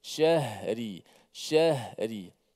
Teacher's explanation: Huruf ha ni sifatnya suara dan nafas kita berjalan terlepas daripada makhraj